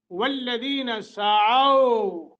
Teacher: سعوا کو ایک سیکنڈ کی مد کر کے پڑھیں گے لیکن نرمی کے ساتھ، پیار سے، ہاں جی، سختی نہیں کرنی اس پر کیونکہ یہ حروف لین میں سے ہے، لین کا معنی نرمی ہوتا ہے۔